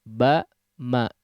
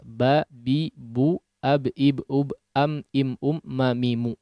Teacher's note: atau tertutup dengan huruf ba ya dan dinamakan dengan syafawi karena huruf mim dan huruf ba makhraj adalah asyafaatan ya atau kedua bibir dua-duanya adalah huruf yang dikeluarkan dari kedua bibir